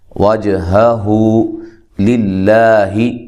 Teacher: یہ لفظ اللہ کا لام باریک ہے، اس سے پہلے حرف پر زیر ہے